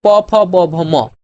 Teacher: এই যে এখানে প ফ ব ভ ম, ঠোঁট দিয়ে উচ্চারিত হচ্ছে